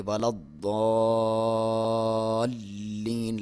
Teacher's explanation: ولد ضاد کے اوپر شد ہے, یہاں پہ دباؤ دے کے آپ پڑھیں گے